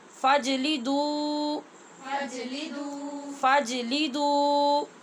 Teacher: جیم پہ قلقلہ ہے اور دال کے آگے واؤ ہونٹ گول کر کے ایک الف کے برابر لمبا کریں گے